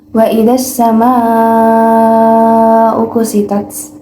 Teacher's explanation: Wa idzas samaa'u kusyitat, terdapat hukum bacaan alif lam samsiyah dan mad wajib muttasil karena huruf mad tabi'i bertemu dengan hamzah dalam satu kalimat dan dibacanya panjang 4 harokat